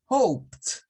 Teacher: el sonido de la T es un sonido que es weak, es débil, no se escucha porque no tiene voz